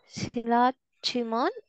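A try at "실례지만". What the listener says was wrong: Not say silla, sille. A, right? This is A. Jiman, sille, jiman.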